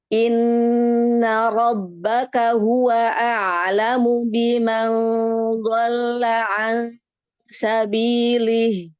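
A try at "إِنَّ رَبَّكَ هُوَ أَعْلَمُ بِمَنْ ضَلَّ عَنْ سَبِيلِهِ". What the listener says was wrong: Yang pertama di kata Rob. Hati-hati rohnya memanjang. Robbaka. Inna rabbaka.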